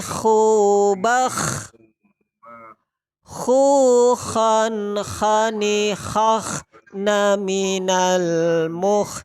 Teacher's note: huruf ha itu keluarnya jadi tenggorokan bagian luar